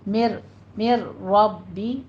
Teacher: रॉ मुफ़ख़म पढ़ी जाएगी